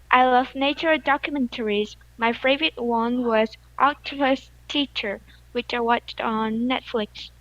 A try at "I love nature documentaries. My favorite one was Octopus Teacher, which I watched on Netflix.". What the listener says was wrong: Your rhythm was fine and your speed was fine. If you just say it a little bit faster, I think it will be a little better.